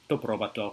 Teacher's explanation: in modern Greek is to probato without the final N sound